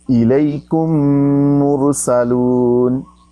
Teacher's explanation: پہلا میم ساکن ہے، دوسرا متحرک ہے، تو پہلے میم کو دوسرے میں ضم کر دیں گے، دوسرے میم پر شد ہوگا.